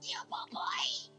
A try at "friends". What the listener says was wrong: No, say friends with an F.